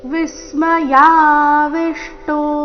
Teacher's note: ಎರಡು ವಿ ಅಕ್ಷರದ ಮೇಲೆ ಆಘಾತ